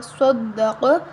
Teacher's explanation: صاد دال زبر صد، دال زبر دا صد، قاف زبر قا صدق۔ قاف اور صاد دونوں حروف مستعلیہ ہیں، موٹے حروف ہیں، تو ہم ان دونوں کو موٹا کریں گے